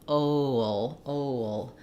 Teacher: before that dark L, we have a little bit of a schwa sound. So as I move from the O to the before the ol, I have a little bit of a W that kind of sneaks in there.